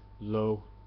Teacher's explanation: the Third in the sequence is not a dip it is simply a low tone